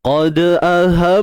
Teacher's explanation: huruf dal yang bertanda sukun, kat sini kita baca dengan qalqalah, sifat lantunan. Lantunan kecil sahaja yang lemah.